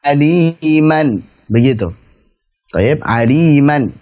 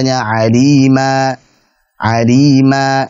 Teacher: Jadi, bukan lagi aliman tetapi alima, dengan tanwin digantikan oleh alif. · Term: mad iwad